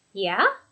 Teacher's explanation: You hear it go up at the end